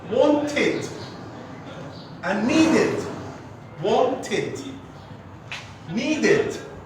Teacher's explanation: Yes, we add an extra syllable here. We add id syllable at the end of the verb.